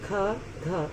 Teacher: जिनके उच्चारण में अधिक समय लगता है, अधिक वायु उत्पन्न होती है, उन्हें जैसे ख, घ, इन्हें महाप्राण व्यंजन कहते हैं।